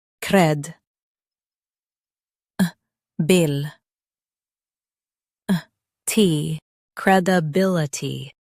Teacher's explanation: Emphasize bill and keep itty soft.